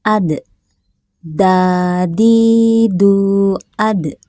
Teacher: huruf dal dalam keadaan sukun, sukunnya sukun asli maka sifat qalqalahnya kecil aja.